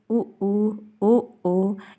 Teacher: जिन स्वर उच्चारण में होठ वृत्त यानी कि गोला बनते हैं उसको हम क्या बोलते हैं वृत्ता मुखी